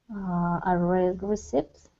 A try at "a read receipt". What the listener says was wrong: A read receipt. Okay, so this word it is not pronounced with the P. Anytime there is a B or a P before a T, these are not pronounced. So a read receipt.